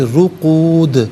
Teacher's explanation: دال ساکن ہوگا لیکن حرف قلقلہ ہے تو آواز لوٹتی بھی محسوس ہونی چاہیے